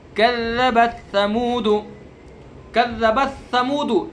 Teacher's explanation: تا کو سا میں نہیں ملانا، ٹھیک ہے، بلکہ صاف پڑھنا ہے